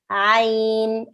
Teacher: Ain is pronounced from the middle of the throat. So this is like the epiglottis.